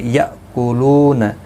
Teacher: حمزہ ساکن کو جھٹکے کے ساتھ ادا کریں گے. لو واو مدہ ہے، ایک الف کی مقدار کے برابر کھینچ کر پڑھیں گے.